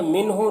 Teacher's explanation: मिनहु नून में इज़हार हो रहा है, इसे जल्द पढ़ना है